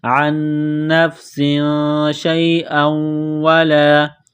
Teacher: تنوین کے بعد شین ہے، حروف اخفا ہے تو تنوین پر غنہ کریں گے ، عن نفس شیئا ولا، شین یا زبر شی، حمزہ واو